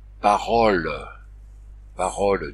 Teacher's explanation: il y a le cas particulier du O tonique venu du latin AU. Lui, il passe à O ouvert.